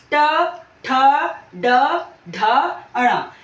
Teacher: हमारी जो जीभ के बिल्कुल ऊपर वाला भाग है जो उसको जीभ टच करती है इसलिए इसको मूर्धन्य बोलते हैं